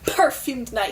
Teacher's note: he just punches that P that plosive